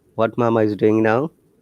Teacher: you can ask simply without the rising tone